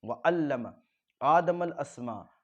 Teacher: हमज़ा के ऊपर खड़ा ज़बर थोड़ा सा खींचे